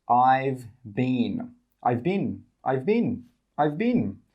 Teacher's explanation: We don't say 'I have been'. We say 'I've bin'.